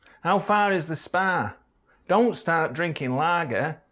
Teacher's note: The calm vowel is quite far forward.